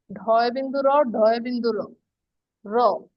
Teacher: উচ্চারণ করে দেখছো যে জিহ্বার নিচের নিচের পৃষ্ঠ মূর্ধাতে বাজে। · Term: তারণজাত বর্ণ